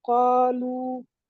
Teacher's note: قاف جو ہے وہ حروف مستعلیہ میں سے ہے، اور اس کو ہم پر پڑھیں گے. اس کے حروف بعد الف سے پہلے مستعلیہ، زبر ہے، اس کو لمبا مت کریں گے.